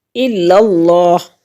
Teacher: الا اللہ، اللہ کے لام سے پہلے لفظ کے اوپر زبر یا پیش ہو تو اس کو پر پڑھیں گے، اگر کسرہ ہو تو پھر ہم اس کو باریک پڑھیں گے۔ تو یہاں پر زبر ہے اس لیے اللہ کو پر پڑھیں گے